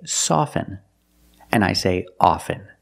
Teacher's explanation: with both words I don't pronounce a t